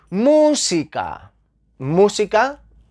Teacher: llevan la sílaba tónica en la antepenúltima posición